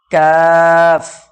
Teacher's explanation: জিহ্বার গোড়া হইতে একটু আগে বাড়িয়ে তার বরাবর উপরে তালুর সাথে লাগিয়ে উচ্চারিত হয় কাফ